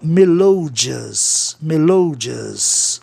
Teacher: Tornando a palavra propaloxítona, e o O de melodioso, no LO ali, vai ter que ter o som de OU para obedecer o sistema em que uma consoante, no caso o D, separa a vogal tônica, no caso o O, de um ditongo começado por E ou por I.